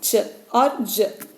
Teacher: it is a complete closure happening at initial, and then we see it is a release is slow and an audible friction is heard. So that's why it is affricate sound.